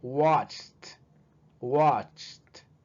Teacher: Que se escuche la T ahí al último.